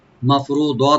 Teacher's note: মাফরুদা মিমটাকে open রেখে রাটাকে এখানে আমরা একটু ডিপ করব, মাফরুদ, দটাকে একটু ডিপ করে একালে ছেড়ে আমরা এখানে থামবো, এখানে মধ্যে আওয়াজ হয়ে যাবে, মাফরুদ, মাফরুদা মানে হলো নির্ধারিত, মাফরুদা।